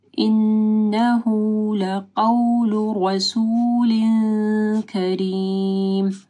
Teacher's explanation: رو کو موٹا پڑھنا ہے